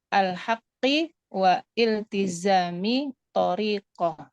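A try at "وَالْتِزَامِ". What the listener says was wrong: Nah itu i-nya nggak usah dibaca ya, karena dia kan hamzah wasol ya. Kalau hamzah wasol itu tidak perlu dibaca. Wal tiza.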